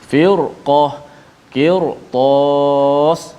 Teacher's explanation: Kerana selepas ra ada huruf isti'la yang berbaris di atas, maka kekal bacaan sini ra itu dibaca dengan tebal. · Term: ra yang dibaca dengan tebal